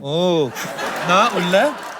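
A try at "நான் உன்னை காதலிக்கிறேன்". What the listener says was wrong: उल्ला नहीं. उल्ला becomes inside. हाँ उन्ना becomes you. हाँ कादलिக்கிறேன். कादलिக்கிறேன்.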